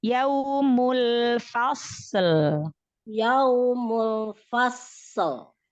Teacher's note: Mul, lam sukunnya tahan dulu.